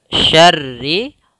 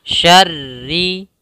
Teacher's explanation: ro yang pertama ketika tasydidnya tebal, ri-nya tipis.